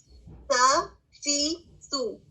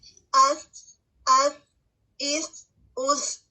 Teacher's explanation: ہمس ہے کیونکہ اس میں ہوا جاری رہ رہی ہے، دال کی طرح رک نہیں رہی